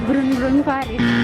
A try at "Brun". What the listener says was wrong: Jadi cara bacanya bukan burung-burung, tapi brang. karena O ketemu N jadinya ang, jadi brang.